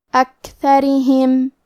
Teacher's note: کیونکہ را کے نیچے زیر ہے تو یہاں را کا حکم ہے ترقیق، ہم حرف الرا کو پتلی آواز میں پڑھیں گے